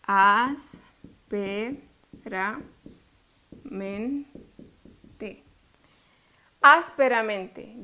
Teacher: Lleva la fuerza, no en la última, ni penúltima, ni la antepenúltima, sino otra antes de la antepenúltima.